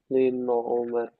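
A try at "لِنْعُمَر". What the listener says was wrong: Ya, hati-hati jangan jangan kepantul ya. Line, line, lin'u, lin'u. Nah, kita praktekkan seperti membaca Al-Quran. Lin'u, lin'umar.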